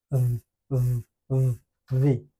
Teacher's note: এফ এর মতো হইলেও এই সাউন্ডটা আসবে ভোকাল কর্ড থেকে, যার কারণে একটু ভাইব্রেশন হয়